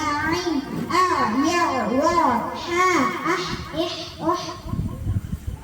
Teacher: தொண்டையின் நடுப்பாகத்தில் இருந்து ஒலிக்கப்பெறுகின்றது